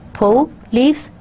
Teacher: Police, so you're putting stress on O.